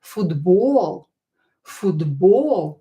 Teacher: try to pronounce the second syllable, which is stressed, a little bit longer.